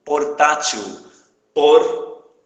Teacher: a sílaba tônica não é o til, que é a última, e sim a penúltima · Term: paroxítona